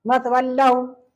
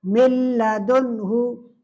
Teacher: नून को बिल्कुल नहीं पढ़ा जाता है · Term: इदगाम ताम